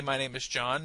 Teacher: notice how I use intonation to indicate that John is the most important word